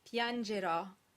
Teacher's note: the E in the second to last syllable is automatically closed